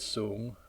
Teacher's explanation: for example the word soon or tall is a low Rising tone